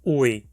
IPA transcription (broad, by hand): uɪ̯